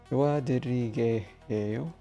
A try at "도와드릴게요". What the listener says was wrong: Close. Drop the extra yay. 도와드릴게요.